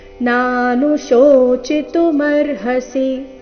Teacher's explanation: ಕೊನೆಯ ಚರಣದಲ್ಲಿ ಎಲ್ಲಿಯೂ ಆಘಾತ ಇಲ್ಲ, ರಸ್ವ ದೀರ್ಘಗಳ ಮೇಲೆ ಗಮನ ಕೊಡಬೇಕು. ನಾನುಶೋಚಿತು ಈ ರೀತಿ ಚೀನ ದೀರ್ಘ ಮಾಡಬಾರ್ದು. ನಾನುಶೋಚಿತುಮರ್ಹಸಿ ಇದು ಸರಿಯಾದ ಕ್ರಮ.